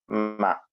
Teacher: രണ്ട് ചുണ്ടുകൾ ചേർന്നിട്ടാണ് മീം ഉച്ചരിക്കുക രണ്ടു ചുണ്ടുകൾ ചേർന്നുകൊണ്ട് മ അതുപോലെ ശദ് നൽകി കൊണ്ട് വായിക്കുമ്പോൾ ദമ്മറ ദമ്മറ